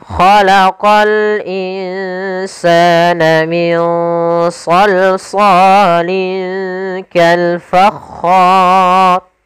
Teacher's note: ro yang dibaca dengan tebal, maka dinamakan ro tafkhim karena sebelumnya ada huruf fathah dan kemudian bertemu dengan huruf mad, maka ro-nya dibaca dengan tebal.